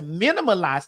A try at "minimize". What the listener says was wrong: Minimize. You've been putting too many syllables.